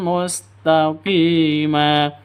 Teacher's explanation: tanwin bertemu dengan mim cara bacanya masuk ke mim siap masuk ke mim disertai dengung dua ketukan Kenapa karena idgham diunah sama dengan yang di atasnya idgham bunah